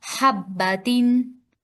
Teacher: हब्बातिन देखिए, हब बा नहीं, हब्बा बा पर तशदीद है, अलिफ नहीं है, तो इसको पढ़ेंगे हब्बातिन।